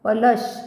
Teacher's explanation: पलश ल वर पुन्हा आघात येईल कारण पुढे पुन्हा जोडाक्षर आहे